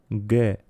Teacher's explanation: Esta letra representa un sonido oclusivo velar sonoro, G. Un sonido robusto como la g de gato en español.